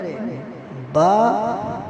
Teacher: با جو ہے وہ ہونٹوں کے گیلے حصے سے ادا ہوتا ہے